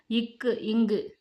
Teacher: நாவின் முதற்பகுதி அன்னத்தின் அடிப்பகுதியை பொருந்துவதால் பிறக்கும் எழுத்து